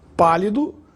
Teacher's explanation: a palavra pálido tem a sílaba mais forte na antepenúltima sílaba, pá. Portanto, é uma proparoxítona. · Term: proparoxitono